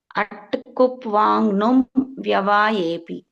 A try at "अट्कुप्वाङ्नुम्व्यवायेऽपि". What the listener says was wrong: ఉత్తమం అమ్మా.